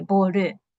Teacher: And dark L sounds like a back vowel, u or o in Japanese. Therefore, we insert the, vowel u when we say boru. And boru has no, pitch variation.